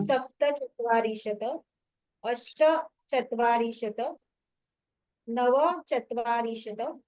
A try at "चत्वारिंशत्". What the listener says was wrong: आणि रिंशत जे आहे त्याचा त हलंत आहे, पूर्ण उच्चारण होत होतं, परंतु ते आठवणीने हलंत उच्चारण करा. रिंशत, चत्वारिंशत.